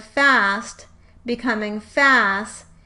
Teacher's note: it better fits cluster reduction because there is still one consonant left in the coda